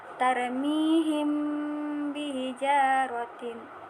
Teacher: mim tampak samar atau bibir tanpa ditekan kuat disertai dengan gunnah. Gunnah tadi artinya ialah berdengung. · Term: ikhfa syafawi